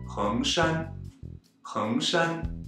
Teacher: Heng is a second tone, so be sure to rise up high enough to meet the first tone with Shan.